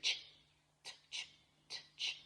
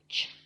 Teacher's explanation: you would think it's t-ch, t-ch, t-ch, but it's just ch, ch. The T is silent, it's just ch.